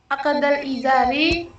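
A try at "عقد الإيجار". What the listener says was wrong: bukan akadal, akadil. Salah harokat aja.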